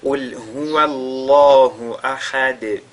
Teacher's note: Elle deviendra donc sakina du fait de cette pause-là, et on fera donc qalqala sur cette dal-là